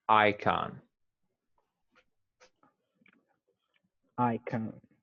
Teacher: we emphasize the first syllable. Just emphasize the I.